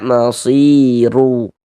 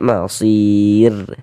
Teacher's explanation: Huruf ra sukun sebelumnya ada huruf ya sukun atau ya mati maka huruf r sukunnya dibaca tipis baca tarkik kita baca masir seperti itu tipis.